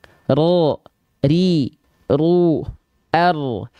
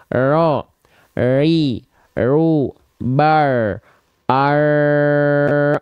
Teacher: Huruf ro ini dilafakkan dengan getaran yang sedikit saja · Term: takrir